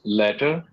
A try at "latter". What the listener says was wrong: actually pronouncing it opposite.